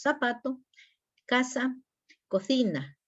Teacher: Y el ceseo que es la pronunciación de la S, la Z y la C igual